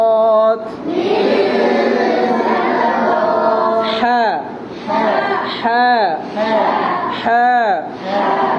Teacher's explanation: বাতাস বের হবে হামসের হরফ